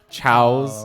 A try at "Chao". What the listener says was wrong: The plural of Chao. is Chao. If you put an S on it, it's chaos.